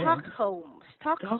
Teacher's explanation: we have a silent L on Stockholm